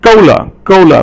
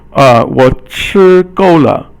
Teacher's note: gou is fourth tone, and it means enough